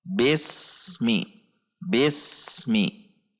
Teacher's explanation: Antara bunyi as dengan bunyi mi tidak terjeda atau tidak terpisah.